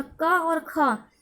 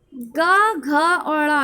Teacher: दोस्तों मान लीजिए का वर्ग हम लेते हैं, का वर्ग का पहला और दूसरा, का और खा क्या हो गया, का और खा क्या हो गया दोस्तों, ये अघोष हो गया। और गा घा और ड़ा, ये क्या हो गया दोस्तों, ये घोष हो गया।